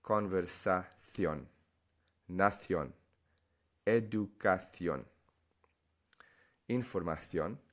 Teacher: It's completely acceptable, but the majority of Spanish speakers in Spain, the C, these C's are a TH sound, like the word the